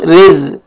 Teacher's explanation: را کو باریک پڑھیں گے، را کے نیچے زیر ہے